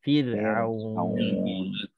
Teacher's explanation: fir kena tipiskan dan kena lebarkan bibir mulut